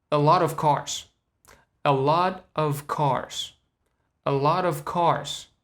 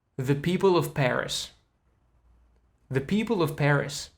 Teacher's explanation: Now, that schwa sound is very important here, because basically we're getting rid of V sound and we're just left with just one sound